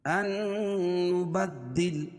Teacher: دال کے اوپر تشدید ہے، تشدید والا حرف 2 مرتبہ پڑھا جاتا ہے اور اس میں سختی ہوتی ہے